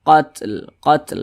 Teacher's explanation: cara bacanya itu seperti ini qatl qatl begitu karena dia memiliki sifat hams